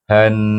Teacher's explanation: Baik, lepas tu jahannam. Suku kata ha ini hendaklah digabung dengan nun yang bertasydid dan dibaca dengan wajib gunnah.